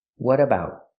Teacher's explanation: We hear the T in what pronounces a fast D because it's between vowels.